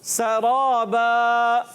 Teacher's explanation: سین کو باریک رکھنا ہے, سیٹی کے ساتھ ادا کرنا ہے